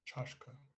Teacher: High tone on the last A on chashka.